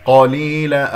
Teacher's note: إلا قليلا لا نمسك اللامات، إلا هذا مسك وأطلت صوتها، وصوت اللام هو فترة زمنية بسيطة ما بين الشدة والرخاء